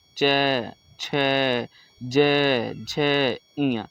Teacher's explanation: है ये हमारा तालव्य होता है तालव्य मतलब होता है कि जो तालू होता है ना ऊपर जीभ के ऊपर वाला जो तालू होता है वहां से बोलना · जैसे आप बोल के देखिए च, तो जीभ जो है वो हमारा ऊपर सट रहा है, ठीक है, तो उसको कहा जाता है च, छ, ज, झ, इया। तो जो हमारा जीभ है वो ऊपर तालु में सट रहा है, इसलिए इसको तालव्य कहा जाता है।